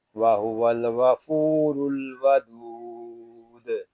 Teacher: دال ساکن میں قلقلہ، مد عارض دال ساکن میں قلقلہ اور وقف بالاسکان